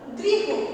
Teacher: এরপর দেখো শব্দের শেষে হ বা যুক্ত বর্ণ থাকলে অ এর উচ্চারণ বজায় থাকে, শব্দের শেষে হ বা যুক্ত বর্ণ থাকলে সেখানে কিন্তু অ এর উচ্চারণটা বজায় থাকে